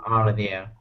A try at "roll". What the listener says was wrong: well, yeah, but no, not 2 vowel sounds. Not row well, but roll.